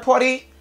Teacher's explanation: RT qui crée flap T ou bien fast D